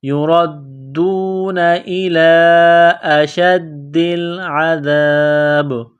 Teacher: عذاب با زیر بی، عذابی جب سٹاف کریں گے، وقف کریں گے تو با کو سائلنٹ کریں گے۔ عذاب با ساکن ہو جائے گی تو یہاں پر قلقلہ کریں گے